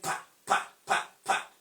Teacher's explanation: There is no vibration, there is no vibration in our vocal cord. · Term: voiceless